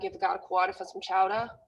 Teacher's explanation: Any ER would have an AH at the end. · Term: Boston accent